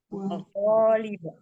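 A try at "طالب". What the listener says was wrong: Talib. Terus kalau baca alif, jangan munyung. Bukan tu. Talib.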